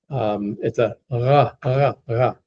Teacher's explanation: The Hebrew R is pronounced more towards the back of the throat. It's a ra, ra, ra, back towards the soft palate.